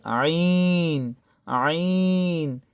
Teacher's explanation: এদিকে খেয়াল করি, এটা হবে আইন আইন, চিকন গলায়, গলার মধ্যখান থেকে